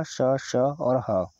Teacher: इनको बोलते समय भी हवा एकदम से रगड़ के निकल रही है। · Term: संघर्षी व्यंजन